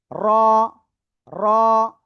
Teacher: জিহ্বার আগার পিঠ তার বরাবর উপরে তালুর সাথে লাগে অক্ষরটা উচ্চারণ হবে